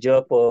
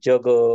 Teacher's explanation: ज्यावेळेस आपली जीभ जी फक्त टाळूला स्पर्श करते उच्चार करताना त्यावेळेस त्याचा उच्चार आपण तालव्य करतो